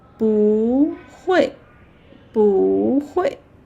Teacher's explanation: Yeah, it's also falling tone. So, when together with another falling tone, this bu is quite smart. Yeah, it change to a rising tone.